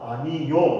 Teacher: 그래서 이 경우에 아니 오 이렇게 발음을 하는 것도 맞고, 그지? 또 반모음을 추가해서 아니요 이렇게 발음하는 것도 허용이 된다, 가능하다. 이게 이제 첨가 현상 중에서 반모음 첨가에 대한 내용입니다.